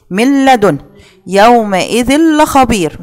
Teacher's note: فما بعملش غنة، هو إدغام بدون غنة